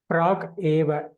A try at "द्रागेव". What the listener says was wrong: द्राग एव, द्र इत्यस्य।